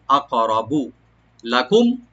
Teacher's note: লামটাকে open করে মিম সাকিনে জাহার করবো আমরা